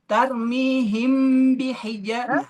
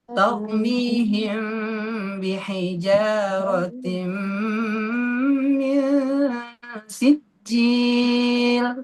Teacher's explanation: ketika si mim mati bertemu dengan ba, maka mimnya jangan terlalu dipencet, jangan terlalu ditekan. Agak longgar sedikit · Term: ikhfa syafawi